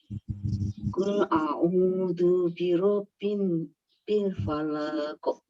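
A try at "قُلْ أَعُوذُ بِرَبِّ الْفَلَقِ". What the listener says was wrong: Nah, masih Bu. Falaknya pendek, Bu. Terus mbaknya double.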